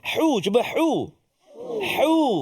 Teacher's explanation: Ha pedas kan, dia terletak dekat tengah rongga kerongkongan kita.